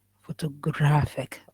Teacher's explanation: four syllables and the stress is on the third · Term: word stress